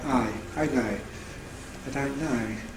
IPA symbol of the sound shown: æɪ